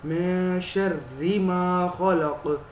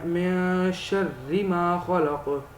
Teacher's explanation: را کے نیچے جب زیر آ جانا تب ہم نے را کو باریک کرنا ہے